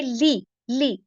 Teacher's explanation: ली को मैंने बिल्कुल लंबा नहीं किया, लाम के नीचे जेर है